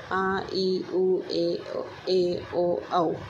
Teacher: दीर्घ स्वर, जिनके उच्चारण में अधिक समय लगे, जिनको 2 मात्राएं गिनी जाए